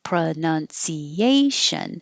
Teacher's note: stress syllable here and it's way over here by itself because the stress is on the second to last syllable